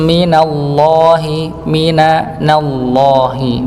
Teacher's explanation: karena huruf nunnya dia tipis lafat Allahnya pada lamnya tebal